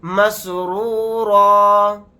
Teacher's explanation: اس طرح سے کھینچیں گے فی اہلہ مسرورا. حالت وقف میں را الف کے ساتھ ایک زبر لگا کر پڑھیں گے, دو زبر نہیں پڑھے جائیں گے